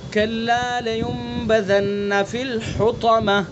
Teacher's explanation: گول تا پر جب ہم نے وقف کیا تو گول تا کو ہائے ساکنہ سے بدل دیا ہے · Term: وقف بالابدال